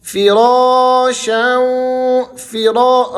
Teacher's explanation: را کو آپ نے کھینچنا ہے اور موٹا پڑھنا ہے